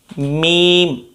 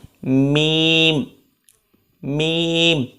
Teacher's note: मीम की आवाज़ तो नाक से आएगी हमारी, लेकिन दोनों होंठों के खुश्क हिस्से आपस में मिलेंगे तो मीम अदा होगा।